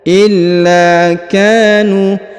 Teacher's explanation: huruf la ditahan dan ditekan karena terdapat tanda tasdid, lalu dipanjangkan 2 harokat karena di depannya terdapat alif